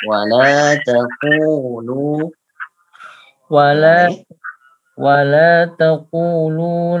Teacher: Taqulu qafnya 2 harakat, lamnya 2 harakat.